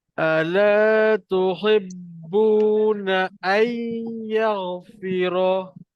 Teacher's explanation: Nun mati bertemu ya. Hukumnya adalah masuk dengung